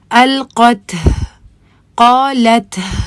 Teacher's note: students جب بھی تا سکون کے اوپر جب رکیں تو اس کے ساتھ ہی وہ ایک ہا کی آواز یا پھر ایک ایکسٹرا ہوا کی ایک پش سی بھی شامل کرتے ہیں